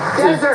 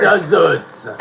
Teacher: emphasize the first syllable of this six-letter word and it's a dry Place emphasize the second syllable of the same word and it means to abandon